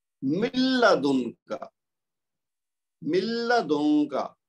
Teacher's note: نون ساکن کی آواز اندر ہی مدغم ہو جائے گی، مکس ہو جائے گی اور وہ غنہ نہیں ہوگا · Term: ادغام